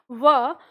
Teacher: होता है कि जब हम बोलते हैं व तो व के जो ऊपर के दांत होते हैं उनके नीचे होठ थोड़ा राउंड शेप में आता है तब हम व का उच्चारण करते हैं ठीक है तो इनका · इसका उच्चारण स्थान है ऊपर के दांत और नीचे का होठ